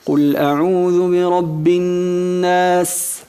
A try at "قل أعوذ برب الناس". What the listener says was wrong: Se tiene que notar. Tú al principio lo pronunciabas tan ligero que no se percibe. Decías No se escucha bien. Entonces hay que presionar y demostrar ese susurro.